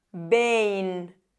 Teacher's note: la he pronunciado como si fuera una B